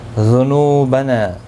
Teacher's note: نو واو مدہ ہے، نا الف مدہ ہے، دونوں کو ایک ایک الف کی مقدار کے برابر کھینچ کر پڑھیں گے.